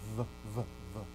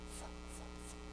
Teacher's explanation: You put your top teeth on your bottom lip, but one's voiced, V, V, V, and one is unvoiced.